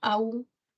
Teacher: Aún es un hiato acentual, parece un diptongo, aún, pero tiene mayor fuerza de voz la U.